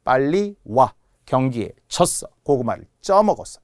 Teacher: 빨리 와 할 때는 빨리 와 이렇게 길게 하지 않는다는 거예요. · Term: 단음